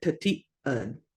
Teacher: Glottal stop just kind of have a pause in that word.